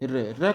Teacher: वह वर्ण जिनको बोलने में हमारी अग्र जीहवा का अग्र भाग कई बार रगड़ खाता है। कंपन होता है। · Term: प्रकंपित या लुंठित वर्ण